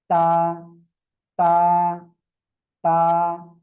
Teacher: জিহ্বার আগা দুই দাঁতের গোড়ার সঙ্গে লাগাবেন, লাগিয়ে উচ্চারণ করবেন।